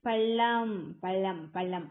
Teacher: நல்லா வளைஞ்சு வருடுவதால் மேல் அண்ணத்த போய் தொட்டு வருடுவதால் இந்த சிறப்பு லகரம் தோன்றும் · நாவின் நுனி மேல்நோக்கி வளைந்து வருடுவதால் லகரம் தோன்றுகிறது. பள்ளம் பள்ளம் பள்ளம் அப்படின்னு சொல்லுவது பள்ளம் அப்படிங்கும்போது நாவின் நுனி அப்படியே மேல வளைஞ்சு வருடும்.